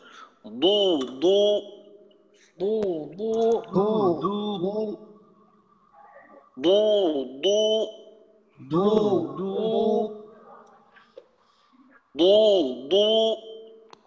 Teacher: কিন্তু যখন জাহারের হরফে পেশ থাকে তখন হালকা একটু বাতাস বের হয়।